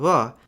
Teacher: /v/ has also shifted closer to bilabial approximant /β̞/